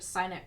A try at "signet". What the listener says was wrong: I don't think you pronounce the G